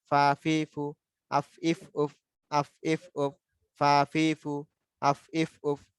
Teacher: উপরের দুটি দাঁত নিচের টুটের পেটের সাথে লেগে যাবে। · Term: ফা হরফের উচ্চারণ